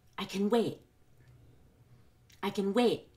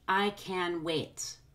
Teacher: I don't stress I because it's a pronoun, or can because that's the modal or function word that we're reducing. I'm going to stress wait at the end of the sentence, and I'm going to build up the energy until I get there.